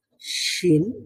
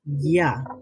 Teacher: হ্যাঁ, এটা শিন থেকে একটু বেশি ফাঁকা থাকে ইয়া বলার সময়। শিন বলার সময় কিছুটা লেগে থাকে দুই দিক দিয়ে শিন, আর ইয়া বলার সময় শেষের দিকে অর্থাৎ জিহ্বার শেষ অংশটা কিছুটা তালুর সাথে লেগে থাকে।